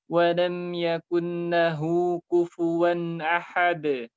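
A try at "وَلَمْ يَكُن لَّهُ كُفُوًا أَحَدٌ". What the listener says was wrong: Antum terdengar huruf nunnya dibaca. Yakunla. nunnya masukkan ke lam. Nunnya hilang. Nunnya harus hilang secara bacaan. Yakulla. Yang jelas lamnya. Walam yakulla.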